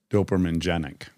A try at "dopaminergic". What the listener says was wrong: No, because there's an ER.